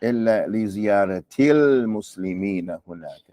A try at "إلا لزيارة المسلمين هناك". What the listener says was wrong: Again, it's a little heavy on your tongue. إلا لزيارة المسلمين هناك.